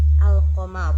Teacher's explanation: maka cara membacanya itu lam dibaca dengan jelas dan terang. Dalam penulisan huruf alif lam, qamariyah memakai tanda sukun pada huruf lam sebagai tanda bahwa huruf tersebut harus dibaca jelas atau terang.